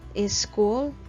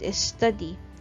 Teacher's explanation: native Spanish speakers are sometimes known to add an extra vowel onto the beginning of words, with consonant clusters in English